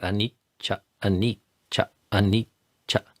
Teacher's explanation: And if you slow down and practice that, anicca, anicca, anicca, and notice the tongue and how air is temporarily held back, and then cha, the next syllable releases out.